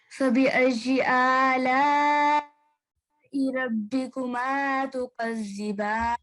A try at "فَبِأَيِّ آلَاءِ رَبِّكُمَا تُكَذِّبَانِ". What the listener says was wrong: Okay, so it has to be quite a lot longer than that. So فبأي آلاء ربكما تكذبان. Okay, so that's the main mistake that you made.